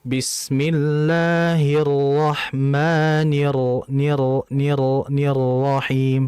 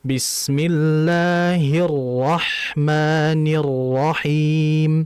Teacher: pengucapannya sudah benar, tetapi coba ketuk sedikit agar tidak terdengar seperti memantul